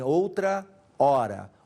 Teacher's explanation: o h não era pronunciado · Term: sinalefa